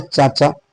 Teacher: च वर्ग का उच्चारण स्थान हो जाएगा तालु